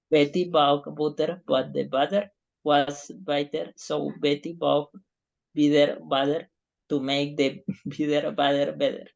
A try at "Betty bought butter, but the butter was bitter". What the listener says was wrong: Yes. It was good.